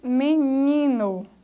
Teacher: Ni é a sílaba mais forte, a sílaba tônica. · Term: paroxítona